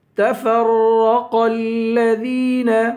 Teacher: قاف کو لام سے ملائیں گے. الذین، ذال کو یا سے ملائیں گے، یا ایک الف کے برابر، یا کو ایک الف کے برابر کھینچ کر پڑھیں گے.